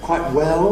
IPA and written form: ˈkwaɪʔ ˈwel (Quite well)